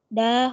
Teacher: hukumnya mad tabi'i dibaca panjang 2 harokat